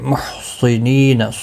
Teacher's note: صاد مستعلیہ ہے، پر پڑھا جائے گا۔ نی یا مدہ ہے، ایک الف کی مقدار کے برابر کھینچ کر پڑھیں گے، نہ کو کھینچنا نہیں۔